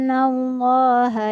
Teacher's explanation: Hai alam Yahoo lendian allaha yaroh nah disini Bian allaha huruf lafaz Allah Hu kedengaran tebal karena diawali dengan huruf yang berharakat fathah Diana nanya berhuruf berharokat fathah maka lava salahnya dijadikan tebal cara